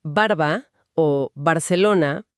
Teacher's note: Si pensemos en palabras como barba o Barcelona, particularmente cuando inician una frase, el mecanismo es casi percusivo. Los labios superior e inferior se sellan por completo, bloquean la salida del aire desde los pulmones · Primero, tenemos el sonido oclusivo bilabial. Que es el más fuerte. Si pensemos en palabras como barba o Barcelona, particularmente cuando inician una frase. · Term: sonido oclusivo bilavial